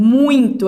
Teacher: Primeiro vai ser a vogal, que é a mais forte, e depois a semivogal, que é mais fraco. Por exemplo, muito, a gente vai escutar mais o U do que o I. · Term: decrescente